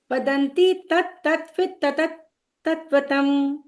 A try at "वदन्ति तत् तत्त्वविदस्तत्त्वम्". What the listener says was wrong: मतलब तत हो रहा है। वदन्ति तत् तत्त्वविदः तत्त्वम्, वदन्ति तत् तत्त्वविदः तत्त्वम्।